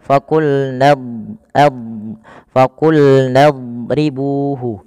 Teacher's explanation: huruf dad itu kan makhrajnya sisi lidah kita bertemu dengan gigi raham atas. Maka ad dan pangkal lidah kita angkat.